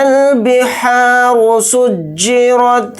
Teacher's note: را کو موٹا یعنی پر پڑھیں گے